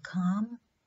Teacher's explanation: the back of the tongue makes a firm contact with the soft palate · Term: voiceless velar plosive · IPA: /k/